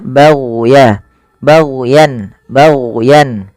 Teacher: jangan sampai memantulkan huruf gain karena huruf gain bukan huruf mantul